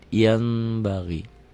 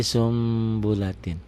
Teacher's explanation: Bunyi n-nya berubah menjadi m, ada bindeng sedikit. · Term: Iklab